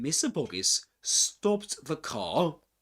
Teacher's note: he doesn't pronounce the the letter R at the end because it's immediately followed by silent silence okay by a pause.